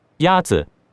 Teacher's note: The first tone is a high-level tone.